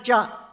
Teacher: ಚ ಅಂತ ಹೇಳಬೇಕಾದರೆ ನಾಲಿಗೆಯ ಮಧ್ಯ ಭಾಗ ಬೇಕು